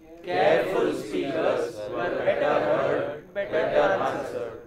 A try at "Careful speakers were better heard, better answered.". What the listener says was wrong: Oh, you are not taking a good pause, you know, good pause should be heard. Careful speakers were better heard and better answered.